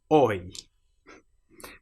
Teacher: you start with your mouth saying o and you end with your mouth saying e.